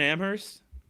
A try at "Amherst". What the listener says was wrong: First of all, you don't pronounce the H.